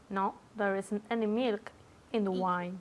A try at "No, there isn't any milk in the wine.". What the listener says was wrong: No oigo la T.